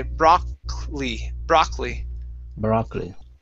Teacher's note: this O is going to be an A sound, and we really jump over that last O.